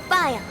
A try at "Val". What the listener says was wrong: It's Val, not Vile. That's how you say it.